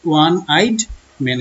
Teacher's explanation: ও এর উচ্চারণ ও এর মতো না হয়ে ওয়ার মতো হয়েছে, ওয়া হচ্ছে একটি কনসোনেন্ট সাউন্ড